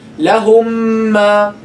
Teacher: you're dropping the first meme, stressing the second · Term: idgham shafawi